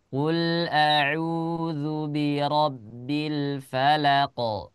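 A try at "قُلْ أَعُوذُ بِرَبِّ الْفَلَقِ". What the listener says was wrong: Nah, jangan sampai ada falaqo. Tidak, ko-nya tidak panjang. Qul a'udzu birabbil falaq.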